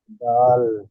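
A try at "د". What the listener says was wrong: দাল টান দেন, দাল, দাল।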